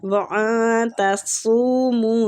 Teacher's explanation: وَأَن تَصُومُوا، صاد کو مستعلیہ پور پڑھیں گے، اخفا ہوگا نون پہ، نون ساکنہ کا